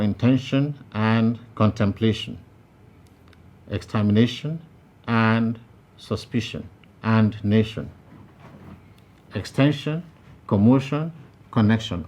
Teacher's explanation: all of them are to be stressed on the syllable before the last including temptation and communication now i asked you the following question